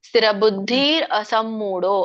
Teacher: ಸ್ಥಿರಬುದ್ಧಿರ ಸಮಮೂಡೋ ಅಂತ ಹೇಳಿದ್ರೆ ತಪ್ಪಾಗಿಬಿಡುತ್ತೆ ಅಲ್ಲಿ ಅಲ್ಲಿ ಅ ಕೇಳಿಸಲಿಲ್ಲ